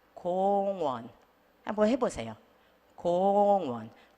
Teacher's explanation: 것처럼 하지 않고 뒤에 연음처럼 넘어가셔야 되는데 제가 쓴 방법은 이거예요 이응을 너무 짧고 강하게 해서 끝내려고 하시지 마시고 약간 이응이 열려 있는 것 같은 상태에서 다음으로 가세요